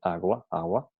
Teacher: en el habla popular y en la secuencia g más u se sustituye por la semiconsonante u, como cuando se oye agua, agua, en vez de agua. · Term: g fricativa intervocálica